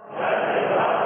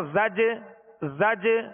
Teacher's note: یہ جو آواز لوٹ رہی نا زج زج، یہ جنبش ہو رہی ہے آواز میں، زج جیم کی ادائیگی میں مخرج میں جنبش ہو رہی، جو آواز لوٹتی ہوئی آ رہی ہے اسے قلقلہ کہتے ہیں،